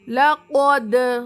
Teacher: حرف قلقلہ میں سے دال آ رہا اسی لیے یہاں پر مخرج کو ٹکر کھلا رہی